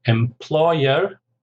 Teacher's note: 3 syllables, stress on the second